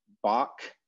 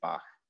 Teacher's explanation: your tongue just kind of approaches the roof of your mouth but doesn't quite touch it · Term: velar fricative